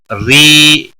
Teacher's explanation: ری زیر کی وجہ سے را باریک پڑا جائے گا